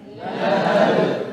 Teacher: Ketika sukun karena dia membentur maka mesti kuat memantul. · Pantulannya sama dengan jim, sama dengan dal, pantulannya pantulan tipis karena mereka huruf tipis.